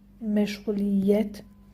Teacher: Vurğu 4-cü hecanın üzərindədir